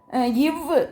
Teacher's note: மேல்வாய் பல்லை கீழ் உதடு பொருந்துவதால் பிறக்கிறது.